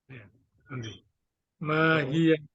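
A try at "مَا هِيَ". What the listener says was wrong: Mahi. Ya, ianya tidak dibaca karena dia menjadi sukun.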